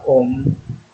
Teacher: Means when we chant the mantra om can say that goes through the nose as well as the sound comes through both mouth as well as nose